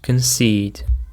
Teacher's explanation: The stress is on the second syllable, concede. It's a verb and it means to admit that something is true, even if you don't want to admit it.